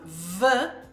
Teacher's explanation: when the air comes out when we have ve that's where we should have a vibration from our teeth on our lower lip because we are making a fricative sound